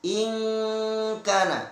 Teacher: Selanjutnya ara'aita in kana, in kana, ada hukum ikhfa, nun sukun ketemu kaf. Ya, nun sukun ketemu kaf harus dibaca samar ikhfa